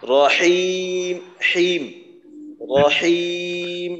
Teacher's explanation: আর হা বলার সময় এই যে মাথা বাঁকা হা আরেকটু গলার মাঝখানে যদি চাপ দেওয়া যায় হলকের মধ্যখানে তাহলে আরো সুন্দর হবে